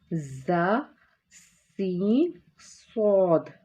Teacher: जब हम इनको पढ़ते हैं तो आपको अपनी आवाज़ में एक सीटी सी मालूम होगी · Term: सीटी वाले हरूफ